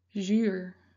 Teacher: zijn je lippen rond en Ze bewegen naar voren alsof je een kus geeft